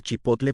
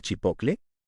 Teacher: Cuando dije que sigue pasando actualmente, es pensando en el ejemplo de Chipotle, ¿cuánta gente cambia el grupo TL por CL y en lugar de decir Chipotle pronuncia Chipocle?